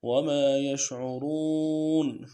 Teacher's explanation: وہی بات ہے، کھینچنا ہے، یشعرون عین کو موٹا کرنا ہے، را کو موٹا کرنا ہے اور کھینچنا بھی ہے رون کو